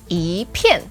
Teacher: when 一 is together paired with a fourth tone, it becomes the second tone